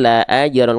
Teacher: Nah, nih, tuh, kol-kolah pantulkan nol harokat, la ajron, jadi bukan la ajron, tapi la ajron, kol-kolah pantulkan nol harokat, nggak dipanjangkan